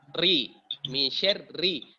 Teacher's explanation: Ri, makhrajnya ujung lidah menyentuh langit-langit bagian depan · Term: ro